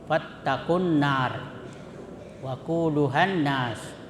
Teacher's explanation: Artinya tidak dibaca itu lamnya, tetapi langsung dimasukkan ke dalam huruf sesudahnya, atau ditasdid huruf sesudahnya. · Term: idgham syamsiah